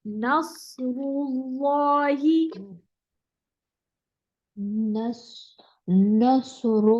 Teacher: और रॉ पे भी डिप्रेशन होगा, लाम भी मोटा होगा, अल्लाह का लाम मोटा होगा